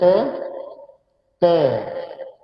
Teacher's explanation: Hujung lidah menekan pada belakang gigi atas.